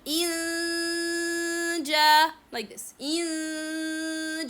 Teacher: concealing the noon sound with the Jim sound means that the tongue is a little bit closer to the Jim articulation point without any real touch between the tongue and the roof of the mouth or any part from the throat.